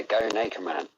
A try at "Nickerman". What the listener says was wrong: Yeah, go Nickerman. When you say it, it sounds like you're saying naked man. That's the Irish. That's the Irish accent. I say Nickerman.